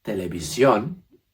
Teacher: televisión will be pronounced with a little extra push at the end